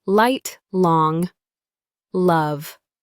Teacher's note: Your tongue touches the roof of your mouth, just behind the teeth. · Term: L sound